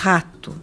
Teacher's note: som gutural, sente-se na garganta, língua baixa